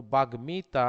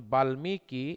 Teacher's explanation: ম ফলা দ্বিত্ব উচ্চারণ হয় না, ম ফলা সরাসরি উচ্চারণ হয়ে যায়